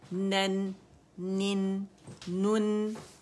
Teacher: और नून जो है वो हम मोटाई से अदा नहीं करेंगे